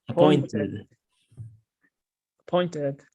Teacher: El último sonido que agregamos es id